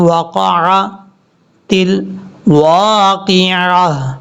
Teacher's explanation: واو کو لمبا کریں گے آگے الف کی وجہ سے، ایک الف کی مقدار